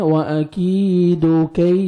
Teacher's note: یا لین ہے، نرمی سے ادا کریں گے اور کاف کو باریک پڑھیں گے. لاسٹ میں الف مد ہے، 1 سیکنڈ، دال کو کھینچنا ہے.